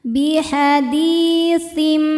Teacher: Falyatu biaditim biad hukumnya mad thobi'i zohiri. Sebab ada ya sukun sebelumnya baris kasrah. Cara bacanya panjang dua harakat